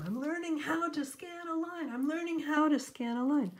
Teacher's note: you can see the how is more stress than what's right next to it